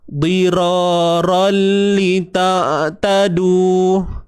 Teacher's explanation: Angkat bunyi ra kerana ra baris atas sifatnya tebal.